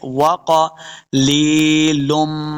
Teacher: واو زبو واو کو جب ادا کریں گے تو اپنے دونوں ہونٹ گول کرنے ہیں تب واو کا مخرج صحیح ادا ہوگا۔ قاف حروف مستعلیہ سے اس کو موٹا پڑھیں گے۔